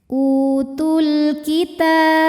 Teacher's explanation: Karena alif lam menghadapi huruf qamariyah yaitu kaf, maka lam sukun dibaca idhar atau jelas. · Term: alif lam qamariyah